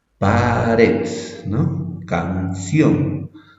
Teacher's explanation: la intensidad de la pronunciación recae sobre la última sílaba. Quiere decir que la sílaba tónica pertenece o recae en la última sílaba, ¿ya? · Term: agudas